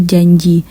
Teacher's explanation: mediopalatal yaitu bunyi yang terjadi akibat Tengah lidah bersentuhan dengan langit-langit keras